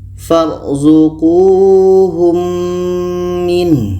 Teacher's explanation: Ini untuk idgham syafawi. Kita dengungkan ketika mim mati bertemu mim.